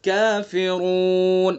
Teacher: قل یا ایہا الکافرون، کافرون، کاف کو صحیح اپنے مخرج سے نکالنا ہے، زبان کی جڑ سے کچھ اوپر کا حصہ، کافرون، اور آگے را کو پر کرنا ہے، کافرون منہ بھر کے